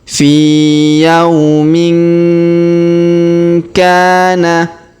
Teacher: Huruf tanwin in pada huruf min bertemu huruf ka maka kita dengungkan dan kita samarkan ya